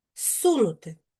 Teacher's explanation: Префікс з перед с вимовляємо як с